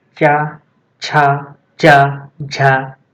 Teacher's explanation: चा वर्ग है हमारा तालव्य, क्योंकि इसमें उच्चारण में हमारी जीभ तालु से टकरा रही है।